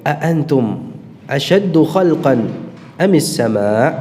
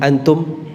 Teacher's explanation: ada dua Hamzah ya Jadi tidak dibaca dengan satu Hamzah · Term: alhamzul muzdawaj